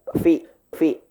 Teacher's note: fa itu bibirnya satu aja Pak ya. Bibir bawah ketemu dengan gigi atas. Fi. Bukan pi ya.